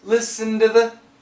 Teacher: he kept the sound listen to the but he changed it not to a t but to a d